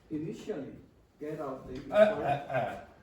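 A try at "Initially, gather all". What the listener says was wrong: So again, you heard the Brazilian error of removing the R completely. So this is gather all.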